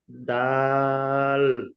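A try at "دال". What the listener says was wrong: অক্ষরটি আরো একটু বেশি করে টান দিয়ে বলবেন।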